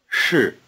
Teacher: The vowel in 是 is just a prolonged R sound